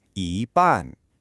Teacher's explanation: Did you catch how both syllables were spoken in a high, flat tone? That means so-so.